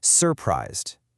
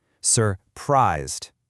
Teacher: So when our brain decides to emphasize the word, our acoustic hardware automatically makes that second syllable louder, longer, and higher pitched. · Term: lexical stress